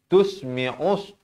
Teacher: Alif lam syamsiyah lamnya kosong tidak bertanda, lam tidak dibunyikan.